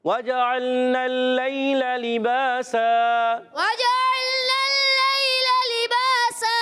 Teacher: لباسن وف کرنے میں لباسا ہے، لام کے نیچے زیر، اس کو بھی نہیں کھینچنا مگر با الف زبر با ایک الف کھینچنا یاد رکھنا ہے کیونکہ الف مدہ ہے تو ایک الف کھینچیں گے. دو زبر کی تنوین کو الف سے بدل دیں گے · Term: وقف بالابدال